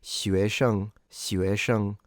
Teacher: Kind of from a Western perspective, when you have a lack of tone at the end, you can kind of imagine it in your mind as if you are slightly stressing the syllable before